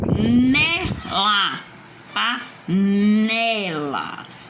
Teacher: o né tá mais forte. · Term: paroxítona